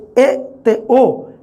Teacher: ਥੋੜ੍ਹੀ ਜਿਹੀ ਘੱਟ ਹੈ ਸਥਿਤੀ ਉੱਚੀ ਜੀਭ ਦੀ, ਤਾਂ ਉਹਨਾਂ ਨੂੰ ਕਿਹਾ ਜਾਂਦਾ ਅਰਧ ਉੱਚੇ ਜਾਂ ਅਰਧ ਬੰਦ ਸਵਰ